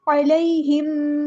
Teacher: سواء علیہم، عین کو مستحرک سے ادا کرنا ہے، یہاں پر مدلین ہو رہی ہے، نرمی سے موڑنا ہے، علیہ نہیں پڑھنا، علیہ علیہ علیہم، ہاں کو سمپل ادا کرنا ہے، میم پہ ٹائم نہیں لگانا، اظہار شفوی ہو رہا ہے یہاں پر، علیہم ایسے نہیں کرنا، علیہم۔